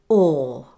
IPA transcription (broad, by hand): ɔː